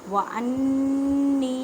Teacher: وانی، نون مشدد ہے اس وجہ سے غنہ کریں، غننے کا مطلب ہے آواز کو ناک میں لے کے جانا ایک الف کی مقدار میں۔ ایک الف کی مقدار کا اندازہ آپ اس طرح کر سکتے ہیں کہ ایک انگلی کھولنے یا بند کرنے میں جتنا ٹائم لگتا ہے۔